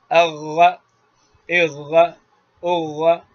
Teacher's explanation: اغا بغیر ہوا کے یہ غین ہے